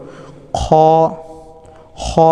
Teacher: খ এর মাখরাজটি কণ্ঠনালীর উপরিভাগ হতে নির্গত হয় এটা আমরা এভাবে উচ্চারণ করব খ উচ্চারণ করব আমরা এরপরে দালের